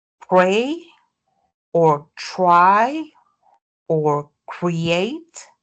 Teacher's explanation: If we have another consonant like an R like in pray or try or create then we don't have aspiration